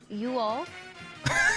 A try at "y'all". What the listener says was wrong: You mean y'all? You all? No, y'all. No, you smoosh them together.